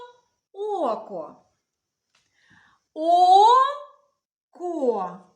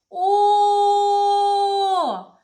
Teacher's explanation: звук О І він довгий ми можемо його тягнути у слові око 2 голосних звука перший звук голосний другий звук